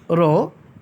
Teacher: কম্পনজাত ধ্বনি 1টি, র। জিভের ডগা দাঁতের গোড়াতে লাগে, তবে জিভের ডগাটা একটু কাঁপতে থাকে, এই জন্য এই ধ্বনিটিকে বলা হয় কম্পনজাত ধ্বনি।